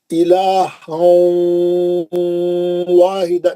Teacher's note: पहली मिसाल पढ़ रहा हूँ, इलाहं वाहिदा, है ना, इलाहं, गोल मुंह करना वाव के लिए, मैं कैसा पढ़ बोला, वाव का मखरज क्या है, होठों को गोल करके मुंह से दूर ले आके पढ़ना, सही मखरज है वाव का